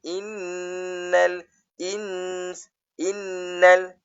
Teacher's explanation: Antara nun kepada lam tu tak boleh tak boleh dengung.